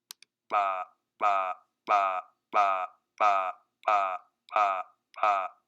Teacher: a continuum going from short aspiration to long aspiration, systematically. In other words, all of the steps are equidistant.